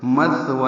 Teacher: ثا ساکن ہے، یہ باریک پڑھا جائے گا نرم، اور اس میں ہمس ہوگا. مت زبان کی نوک سامنے کے دانتوں کے اندرونی کناروں سے لگائیں گے، یعنی ثناء اولیاء کے اندرونی کناروں سے.